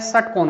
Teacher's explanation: Slate वाला जो स है वो तो दंत के साथ आता है, सलगम वाला जो स है वो तालु के साथ आता है, और षटकोण वाला जो स है वो मूर्धा के साथ आता है। तो ये ध्यान रहे षटकोण वाला स है तो इसका उच्चारण स्थान आपके मूर्धा होगा। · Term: 3 प्रकार के स